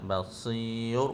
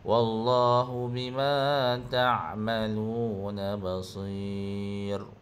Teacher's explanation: bacaan mad arif disukun 2 harakat beserta ismam. Ismam ni kita muncul mulut lah.